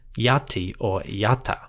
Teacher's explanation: that final n was probably left off and the word would be pronounced yati or yata